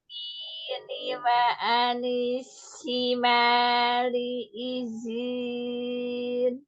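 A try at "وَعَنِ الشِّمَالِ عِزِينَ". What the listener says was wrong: Hanya tafasyinya pada shin tadi ya. Wa anish wa shimali izin.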